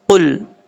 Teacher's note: قاف، اس کا مخرج ہے زبان کی جڑ اوپر والے تالو کے نرم حصے سے لگے تو قاف پڑھا جاتا ہے۔